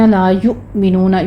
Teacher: آگے افئدۃ الذین لا یؤمنون، یؤمنون پہ جھٹکا ہے، لا یؤمنون نہیں ہے، لا الف مدہ پورا ادا کیجیے، اور یو میں جھٹکا ہے